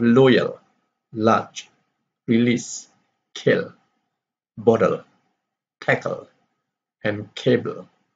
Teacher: produced by raising the tip of the tongue and letting the air flow through both sides of the tongue it is purchased with the vibration of the vocal cords so